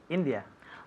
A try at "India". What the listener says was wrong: Good, very good. India. India.